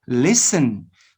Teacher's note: the letter t is silent is not pronounced so that's why listen has six letters but just five sounds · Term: silent letters